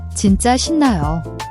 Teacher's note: The shin-NA-yo is pronounced as a soft sh sound, similar to she in English, not a hard s sound.